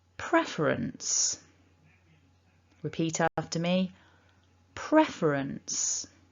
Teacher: into three syllables and that blue mark top left shows that we stress the first syllable of the word so pref is the strongest part